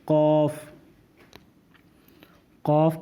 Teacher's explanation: कफ जबान के गले की तरफ हलक की तरफ वाले हिस्से पे कफ अदा होगा